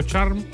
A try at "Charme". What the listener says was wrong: En verdad en Chile es Charme, en Francia es Charme, pero nadie me ha dicho nunca, me han dicho Charm muchas veces, con decir la E.